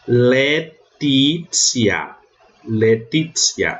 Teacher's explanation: O TI, antes de vogal, eu leio como tsi.